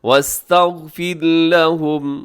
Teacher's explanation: اور اس میں را باریک ہے، غین موٹا ہے